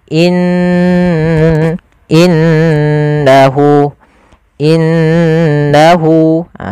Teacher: dengan warna hijau cara membacanya Jangan langsung innahu tapi ditahan dulu gunahnya dimasukkan ke rongga hidung kita